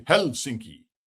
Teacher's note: They emphasize the first syllable.